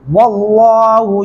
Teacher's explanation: اس لام کو موٹا پڑھیں گے